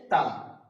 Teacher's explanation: উপরের দাঁত জীবের আগার উপরে চাপ লেগে তা উচ্চারণ হচ্ছে